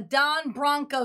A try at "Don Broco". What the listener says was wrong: Close. Close. Last name's not Bronco. Don Broco. I think Broco is probably the closest, yeah, in my opinion.